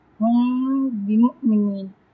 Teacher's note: میم ساکن کے بعد با آ گیا ہے تو یہاں پہ ہم کیا کریں گے، یہاں پہ ہم اخفا شفی کریں گے